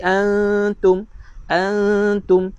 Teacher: nun mati berjumpa dengan ta, hukumnya ikhfa hakiki. Ikhfa hakiki kena buat apa? Dengung